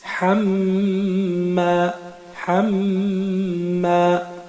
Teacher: Ici, souvenez-vous, nous avions expliqué au début que le mim et le noun, lorsqu'ils sont mushaddad, c'est-à-dire lorsqu'ils ont un tashdid, on va appliquer la règle du runna, un son dans le nez.